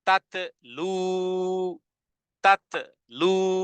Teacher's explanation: জিহ্বার আগা সামনের উপরে দুই দাঁতের গোড়ার সাথে লাগিয়ে টেনে পড়তে হবে এবং আওয়াজকে কঠিন করতে হবে